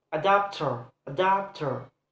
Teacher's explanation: the stress is placed on the second syllable